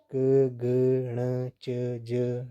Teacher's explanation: जो हमारे फेफड़ों से बाहर जो वायु निकलती है उसकी जो मात्रा है वे कम होती है। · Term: अल्पप्राण